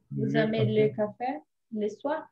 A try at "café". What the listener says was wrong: Le café. Café. Aí você está com vício de linguagem aí com o K, o som. Você está falando sempre como em português.